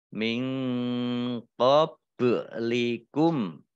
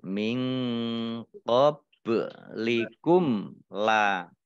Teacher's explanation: Kemudian ba sukun, bacaan qalqalah dibaca memantul, ya. Pantulannya ditampakkan, ya.